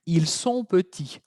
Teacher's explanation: La pronunciación, ahí teníamos una T, ¿okay?, que al final es muda.